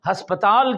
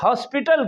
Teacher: ہماری جو انگلش ہے یا ہماری زبان میں ہسپتال کہتے ہیں، اب ہسپتال کو انگریز لوگ ہاسپٹل کہتے ہیں، اسی تا کو ٹے پڑھتے ہیں